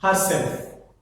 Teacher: Again, her is the one word, self is the second word. The stress falls on the self